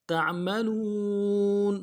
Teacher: لام کو واو کے ساتھ ملانا ہے، واو مدہ، ایک الف دار میں کھینچیں گے